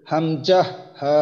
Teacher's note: এক নম্বর মাখরাজ হলকের শুরু হইতে